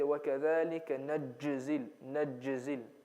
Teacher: A lot of people, when they do qalqala, they put the jim sound a bit too harsh.